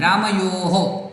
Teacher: તો વિસર્ગ છે એનું ઉચ્ચારણ હ નહીં થાય, હો થશે. રામયોહો. તો અહીંયા પણ બધા સામાન્ય રીતે રામયોહ, એવું નથી, રામયોહો.